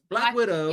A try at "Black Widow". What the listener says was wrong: It sounds like you're saying Black Window.